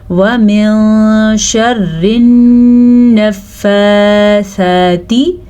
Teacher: نون کے اوپر شد ہے تو نون پہ غنہ کرنا لازمی ہے